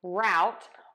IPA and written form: raʊt (rout)